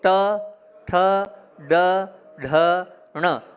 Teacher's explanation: जीभ को जब आप पीछे ले जाएंगे वहाँ से ण का उच्चारण होगा।